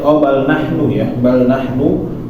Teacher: Setelah nu itu nggak ada waw, maka jangan sampai dipanjangin bal nahnu mahrumun, tapi langsung pindah.